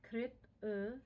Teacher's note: that E on the end is a schwa, which is like an upside down E.